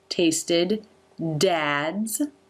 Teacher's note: The lips will close for the M and when they open you will see the teeth are still closed for the T and tasted. Then the st consonant cluster and then there's a quick I vowel there before the D.